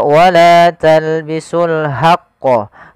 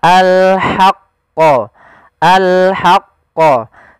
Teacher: Jangan dibaca wala talbisul haqqo, tapi dia ha posisinya adalah kita bagaimana menyempurnakan huruf ha kecil, yaitu kita mengeluarkan dari tengah tenggorokan kita ha disertai dengan adanya nafas